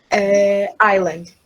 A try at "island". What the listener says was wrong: Não se pronuncia o S. é Island.